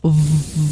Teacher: 千万不要用两个嘴唇一起的这个 w 的这个声音